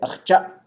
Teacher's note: and it stops. It has a glottal stop at the end.